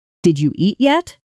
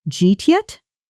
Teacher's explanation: Did you eat yet? Often becomes jeet yet? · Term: Connected speech